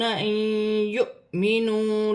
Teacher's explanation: نون ساکن میں غنہ بھی کیا جائے گا اور ملا کر بھی پڑھا جائے گا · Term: ادغام